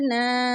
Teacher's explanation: لام نون زیر لن، نون الف زبر نا، یہاں پر نون مشدد ہے، نون مشدد پر غنہ کریں گے۔ غنہ کا مطلب ہے ناک میں آواز لے جانا، اور یہاں پر الف ہے، الف سے پہلے نون کے اوپر زبر ہے، تو یہ الف مدہ کی مثال ہے۔ · غنہ کا مطلب ہے ناک میں آواز لے جانا، اور یہاں پر الف ہے، الف سے پہلے نون کے اوپر زبر ہے، تو یہ الف مدہ کی مثال ہے۔ اس کو ایک الف کی مقدار کے برابر لمبا کر کے پڑھیں گے۔